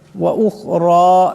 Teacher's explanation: রার উপর খারা জবর আছে, গতিকে রাকে মোটা আওয়াজে পড়তে হবে।